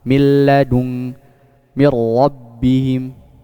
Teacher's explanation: Setelah mi baru langsung masuk ke lam. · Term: idgham bi ghairi gunnah